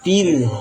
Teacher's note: Ra ditipiskan karena sebelumnya berharokat kasrah.